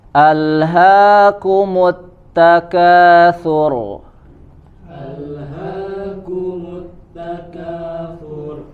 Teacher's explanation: huruf RO di akhir ayat dibaca tebal